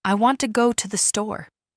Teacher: In this sentence, want and store are stressed and the other words are said quickly and softly.